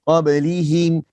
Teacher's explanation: Harus kita sebut him lembut, jangan hem.